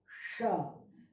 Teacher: Automatically like a whistle sound you will get.